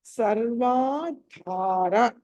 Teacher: అక్కడ ధా అన్నది మహాప్రాణము ఒత్తి పలకాలి